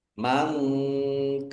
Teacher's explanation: nun sukun bertemu dengan huruf kaf, bacaan ikhfa, dibaca samar-samar.